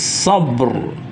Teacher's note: sabr ro matinya itu juga ditebalkan